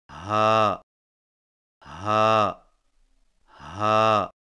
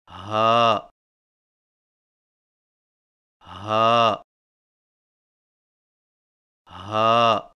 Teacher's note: زبان کی جڑ کو حلق کی طرف دبائے بغیر باریک اور بغیر رگڑ کھاتی سانس میں پڑھیں